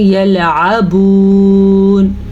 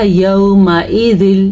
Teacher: واو ساکن سے پہلے پیش آ گیا ہے تو یہ واو مدہ سے ہم کھینچیں گے